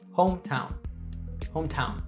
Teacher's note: the primary stress falls on the first syllable home